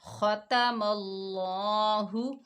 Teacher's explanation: تو اللہ کے لام کو ہم موٹا پڑھیں گے کیونکہ اس سے پہلے زبر آ رہا ہے، تو ہا کو بغیر کھینچے پڑھیں گے۔ · دیکھیں، خا کے اوپر زبر ہے، تا کے اوپر زبر ہے، تو ہم بغیر کھینچے پڑھیں گے۔ خا موٹا حروف ہے، خا کی آواز جو ہوگی کھردری ہوگی، اور میم کو اللہ کے لام کے ساتھ ملا کر پڑھیں گے۔